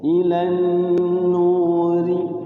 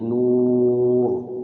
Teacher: Tapi kalau di wasol tipis jadinya rohnya ri ya. Ilan nuri tipis kalau diwasal, tapi kalau diwaqaf tebal seperti itu.